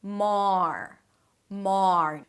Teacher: We begin with an 'mm' sound and then the 'ar' as in 'car'. Technically it's the 'father' vowel, but a bit more rounded because it has the R right after